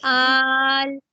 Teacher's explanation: یہاں لام پہ میں نے سٹاپ کیا. جب ہم نے سٹاپ کیا تو لام پر آواز بلندی کے ساتھ رک گئی ہے، یعنی اس کے اندر جہر پایا جائے گا